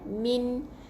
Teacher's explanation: Min, matikan dengan n, jelaskan tanpa dengung sebab ada tanda mati.